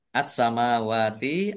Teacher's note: langsung masuk ke huruf berikutnya yaitu Sin ditandai sinnya ada tasdidnya sin tasdid dibaca dobel sinnya